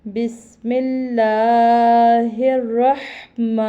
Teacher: میم کے اوپر کھڑی زبر ہے 2 الف کے برابر سے کھینچ کے پڑھیں گے یا لمبا کریں گے